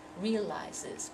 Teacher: that first syllable is stressed, so there's a temptation to cut off that last syllable because they go so quickly.